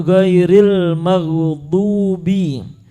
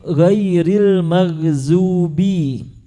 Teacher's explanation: sudah diganti yang awalnya dha menjadi zai